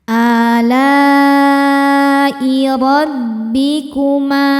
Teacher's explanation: Alai la hukumnya mad wajib muttasil karena mad tabi'i bertemu dengan hamzah dalam satu kata. Mad tabi'inya alif didahului fathah, hamzahnya i, terdapat pada kata yang sama yaitu alai. Maka lamnya panjang, boleh 4 boleh 5 harokat.